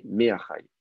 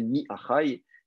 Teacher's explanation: C'est pareil, hein, le fait que lorsque le noun est assimilé et que la gutturale ne veut pas prendre le dagesh, qui est un déplacement compensatoire qui fait qu'on passe du chirek au tséré